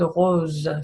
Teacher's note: So if you speak Spanish, it's kind of a little bit like la jota, but it's not as dry, as harsh, okay? It's kind of like a softer, more liquid sound that kind of goes a little bit through the back of your throat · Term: the French R